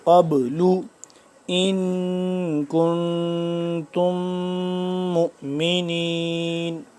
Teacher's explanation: قاف کو موٹا پڑھیں گے اور با کو ہم قلقلہ کریں گے